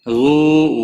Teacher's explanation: واو مدہ ہے، ایک الف کے برابر کھینچ کر پڑھیں گے۔